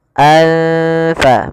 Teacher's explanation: tanwin bertemu dengan salah satu huruf Ikfa yaitu huruf Fa maka cara membacanya samarkan tanwinnya kepada huruf Fa anfa makhraj daripada Fa adalah gigi atas menempel dengan bibir bawah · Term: Ikhfa